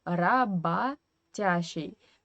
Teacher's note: here i wanted to talk a little about russian phonetics because we write ra bo tia shi but we pronounce this o in the middle as a rabba tashi because this o is in unstressed weak position and